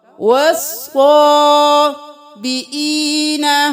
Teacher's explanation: صاد کو دو بار ادا کر، تشدید ہے، واو زبر صاد.